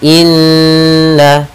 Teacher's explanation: Cara membacanya adalah kita menahan suara n-nya 2 harakat. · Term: gunnah